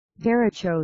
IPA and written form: dəˈreɪtʃoʊ (derecho)